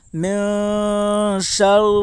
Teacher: نون ساکن کے بعد حروف اخفا کے 15 حرفوں میں سے شین ہے، اس لیے نون ساکن کا اخفاء حقیقی ہوگا ، شین کے اوپر زبر ہے، زبر کو جلدی پڑھیں تھوڑا